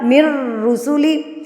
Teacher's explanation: मिरर जुबान में ही रह गया है नाक में तो जा ही नहीं रहा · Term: इदगाम बिला गुना